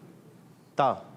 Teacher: زبان کا سرا اوپر کی دانتوں کی جڑ سے ادا ہوتا ہے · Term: تا کا مخرج